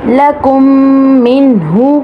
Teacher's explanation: ادغام میم ساکن کے بعد دوسری میم آ جائے تو دونوں میم کو ایک کر کے غنّے کے ساتھ پڑھتے ہیں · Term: ادغام شفوی